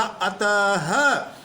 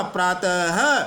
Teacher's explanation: विसर्ग का पृथक उच्चारण होता है, हम इसको अत नहीं बोल रहे हैं, इसको हमने बोला अतः